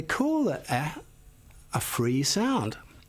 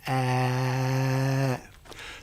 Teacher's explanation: The tongue doesn't stop or slow down the sound in any way.